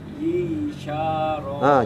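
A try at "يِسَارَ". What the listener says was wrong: Jangan suka sya. Yisa tipis. Yisaro.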